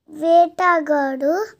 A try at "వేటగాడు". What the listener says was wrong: గాడునా? గాకు దీర్ఘం లేదా?